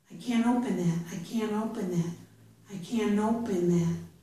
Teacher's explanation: many speakers move right from the N, can, right into the O